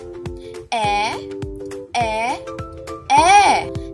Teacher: Sunod naman ang letrang E, paharap, pagitna, di pabilog.